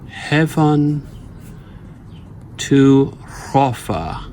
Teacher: And just by doing that, and then of course we know there's a caesura here, Heaven to hrofa, we can see that this is the first foot, and it is a falling foot with 2 weak syllables, and hrofa is the second one.